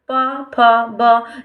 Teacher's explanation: जब हम बोलते हैं तो हमारे होठ टकराते हैं आपस में, जीभ एक स्थान पर रह जाती है। ठीक है, तो इनका क्या होगा? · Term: ओष्ठ